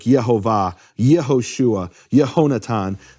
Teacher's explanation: that yah naturally turns into an e at the beginning of a word